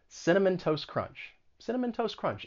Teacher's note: the final t in toast it's gonna go away because it comes between two consonant sounds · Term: elision